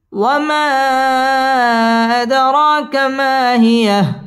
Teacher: ওয়ামা আদ দাল কলকলার হরফ ধাক্কা দিয়ে পড়তে হবে ওয়ামা আদ র খারা জবর র এক আলিফ টেনে পড়তে হবে এবং র পুর হবে ওয়ামা আদ র কামা মধ্য তাবাই এক আলিফ টেনে পড়তে হবে